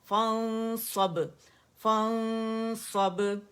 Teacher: موٹا اخفا کرنا ہے, نون کو چھپانا ہے اور اخفا حقیقی کہلاتا ہے